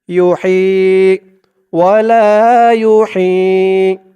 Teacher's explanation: হার উচ্চারণটা গলার ভিতর থেকে চিকুন হয়ে বের হবে